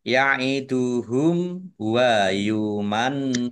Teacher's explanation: Nun tasdid, bacaan gunnah atau mendengung. Ya, ditahan dua harokat agar tampak dengungannya.